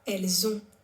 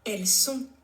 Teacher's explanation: there is a Z sound in ils ont, elles ont, which is they have, and an S sound in ils sont, elles sont, they are